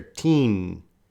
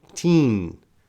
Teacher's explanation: It's very important to have the teen with the N sound. The N at the end is not so strong, but it is there. Teen. It's a nasal sound.